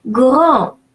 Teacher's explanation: AN followed by a consonant or at the end of the word is pronounced nasal A.